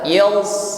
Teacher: Kalau desisnya sama-sama memiliki slofir, huruf sin dan shad, ya, namun bedanya shad isti'la irtifa' aqsal lisan, lidah bagian pangkal naik, ya, tasa'udus saud, suaranya terkumpul di langit-langit, ini yang membuat bunyinya tebal